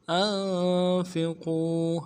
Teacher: حمزہ کو نون کے ساتھ ملانا ہے، نون ساکن غنہ کریں گے، فا کو نرمی سے ادا کریں گے، قوف کو واو کے ساتھ ملانا ہے، واو ساکن اس سے پہلے پیش ہو، واو مدہ ایک الف امداد میں کھینچیں گے، قوف کو موٹا کریں گے۔